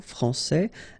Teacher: here you get this final S that you don't pronounce